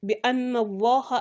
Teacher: The word Allah, when fatha comes before the word Allah, you make it thick